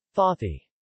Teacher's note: similar to t, but with the tip of the tongue put against the top teeth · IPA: [t̪]